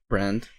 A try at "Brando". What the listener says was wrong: You're missing a vowel, man.